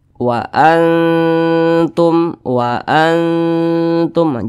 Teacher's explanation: itu disamarkan kemudian juga didengungkan nah karena dia ini akrab maka ketika melafazkannya itu dia lebih condong berbunyi n nah tapi disamarkan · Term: ikhfa Hakiki